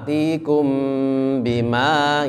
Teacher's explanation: Kum ketemu dengan ba itu dengung, lama